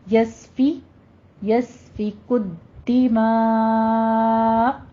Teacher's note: اور پھر آگے دماء میں بھی یسفک الدماء میں آپ نے دال کے اوپر تشدید ادا کرتے ہوئے سختی سے، نیچے کسرہ ہے ، دے معنی کے نا، دی دال زیر دی، یہ ساؤنڈ